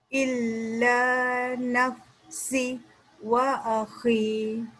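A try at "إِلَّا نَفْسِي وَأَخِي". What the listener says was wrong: Si dia jangan baca macam terstop. Baca panjang baris dua harakat. Illa nafsi wa akhi.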